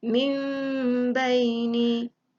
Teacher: Nun mati bertemu ba, iqlab. Cara baca dia, rapatkan bibir dan dengung selama 2 harakat.